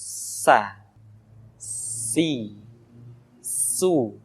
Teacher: Di antara sifat yang menonjol ketika kita mengucapkan huruf sa atau huruf sin adalah sifat as-safir. Di mana ketika kita mengucapkan huruf sa, ada suara tambahan yang menyerupai dengan suara belalang